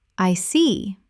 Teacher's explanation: When you show understanding with, "I see." your tone drops slightly to show calmness.